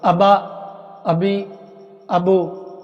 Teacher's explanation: حمزہ کو با سے ملایا، 1 سیکنڈ کا سٹاپ کیا، تو شد کی یہ سٹاپ کرنا شد کا تلفظ ہے۔ آپ سٹاپ نہیں کریں گے شد کا تلفظ نہیں ہوگا۔